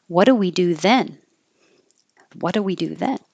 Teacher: I'm just guessing that then would be emphasized